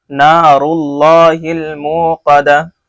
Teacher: لفظ اللہ سے پہلے پیش ہے، اس لیے اللہ کا نام موٹا ہو رہا ہے. نار اللہ الموقدہ، موقدتو تھا، ہم آیت کر رہے ہیں اس لیے گولتا کو ہا ساکن بنا رہے ہیں.